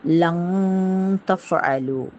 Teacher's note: சுக்கூன் பெற்ற நூன் அல்லது தன்வீனுக்கு பின்னாடி இக்ஃபாவுடைய எழுத்துக்கள் வரும்போது இக்ஃபா வந்து அந்த நூனை, அந்த தன்வீனுடைய நூனை அல்லது சுக்கூன் பெற்ற நூனை வந்து மூக்கில் மறைத்து ஓதணும் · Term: இக்ஃபாவுடைய சட்டம்